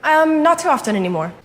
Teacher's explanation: she says often, pronouncing the T, and it's not that common to do that these days in casual speech, so she might be speaking a little bit more clearly on purpose for the interview.